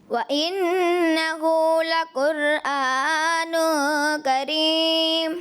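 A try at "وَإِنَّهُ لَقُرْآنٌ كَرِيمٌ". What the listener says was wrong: تھوڑی قاف کی ادائیگی اور را پر محسوس نہیں ہوا.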